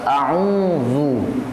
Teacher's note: bunyi u itu harus monyong, harus manyun. Karena dhammah.